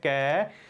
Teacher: ਕੱਕਾ ਜਿਹੜੀ ਧੁਨੀ ਹੈ ਕੈ, ਉਸ ਦਾ ਉਚਾਰਨ ਕੰਠ ਦੇ ਵਿੱਚੋਂ ਹੁੰਦਾ ਹੈ, ਇਹ ਹੈ ਕੰਠੀ ਧੁਨੀ